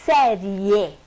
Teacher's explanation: O i pronunciado com uma força bem menor. Veja bem, o e, você fala série. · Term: semivogal